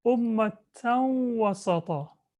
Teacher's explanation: There's a shadda on the waw, and the noon of the tanween disappears into the waw. That's called idgham.